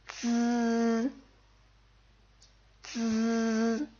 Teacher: You kind of extend that sound so it's like a buzzing, that sound.